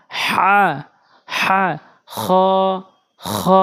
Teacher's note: একদম চাপ দিয়ে হলকের মাঝখান থেকে উচ্চারণ করবেন